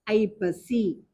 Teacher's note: எங்க அப்படின்னு பார்த்தா, ஒரு சொல்லுக்க முதல்ல வந்துச்சுன்னா, முதல்ல குறுகி ஒலிச்சுன்னா 1/2 மாத்திரையா வரும். ஒரு வார்த்தைக்க முதல்ல வந்துச்சுன்னா 1/2 மாத்திரையாக வரும். ஒரு சொல்லுக்க நடுவிலையோ இடையிலையோ அல்லது இறுதியிலையோ வந்தா 1 மாத்திரை அளவாக ஒலிக்கும். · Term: ஐகார குறுக்கம்